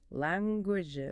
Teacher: But phonetically, it requires an is sound. Your vocal cords have to vibrate on that final consonant.